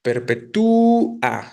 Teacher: suena fuerte la U. Por eso se genera el hiato